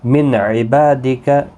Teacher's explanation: نون ساکن کے بعد حروف حلقی کا عین ہے، اظہار حلقی ہوگا، یہاں پر غنہ نہیں ہوگا، با الف مدہ ہے، ایک الف کی مقدار کے برابر کھینچیں گے۔